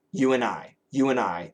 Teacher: in a common word like and, we almost always say you and I, you and I. There is no D.